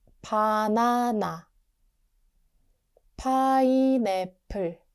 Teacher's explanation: 비읍 is soft, like B at the start. 피읍 is strong aspirated P, which means more air